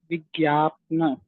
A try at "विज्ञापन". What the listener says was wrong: विज्ञापन। पा तो पूरा है, पन होगा ना। थोड़ा थोड़ा क्लोज आ रहे हो, लेकिन अभी वो प्रैक्टिस करनी पड़ेगी।